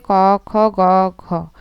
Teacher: প্রথমের দুটা হচ্ছে অঘোষ। পরের দুটা হচ্ছে ঘোষ। আর প্রথমেরটা হচ্ছে অল্পপ্রাণ। পরেরটা হচ্ছে মহাপ্রাণ। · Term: অঘোষ অল্পপ্রাণ